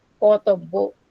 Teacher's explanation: the main accent is shifted from second syllable to the third syllable or final syllable, making the word Katabbo.